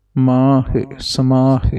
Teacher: ਹਹ ਦੀ ਸਿਹਾਰੀ ਪੜਹਨੀ ਹੈ ਲਾਵੇ ਨਾ ਬਣਨਾ